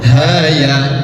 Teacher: ha dan ya masuk pada hukum mad lazim harfi mukhaffaf panjangnya dua harakat